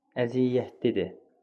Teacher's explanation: İndi baxırıq, 2 məqamda səs düşümü var. Əziyyətlidir sözündə r düşdü və y. Y səsinin biri də düşdü.